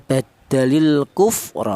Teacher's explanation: Yang depan ya ini ada alqu ada alif lam berjumpa dengan huruf kaf. Ini cara bacanya lam matinya ini dibaca izhar atau dibaca jelas ya. · dibaca idhar atau dibaca jelas ya, badalil kufra, seperti itu, jelas ada lam matinya. Alku, ini namanya idhar qamariyah. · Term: izhar qamariah